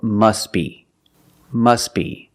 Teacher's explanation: If you have two words together and you're linking the words, which we do, the T is also silent.